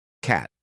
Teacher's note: Back of tongue to the soft palate, back of the mouth roof. Release with air. No voice.